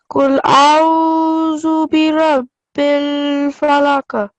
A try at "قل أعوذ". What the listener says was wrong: Make sure that you say the a and u separately. Don't mix them up. Don't say kul a'udhu. Kul a'udhu.